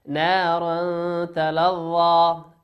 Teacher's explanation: تنوين أتى بعده حرف التاء والتاء من حروف الإخفاء